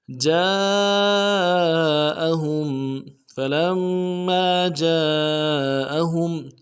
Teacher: हा को मीम साकिन के साथ मिलाना है, मीम साकिन में गुन्ना करेंगे · जिम के साथ अलिफ मद्दा है एक अलिफ दाल में खींचेंगे, और मद भी है तीन अलिफ दाल में खींचेंगे , मद के साथ हमज़ा को नून से अदा करेंगे, हा